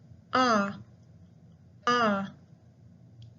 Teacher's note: So it is not a rounded vowel. Instead, it is just a neutral vowel or unrounded vowel.